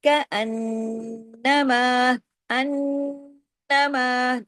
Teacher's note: نون پہ تشدید اور بڑا غنہ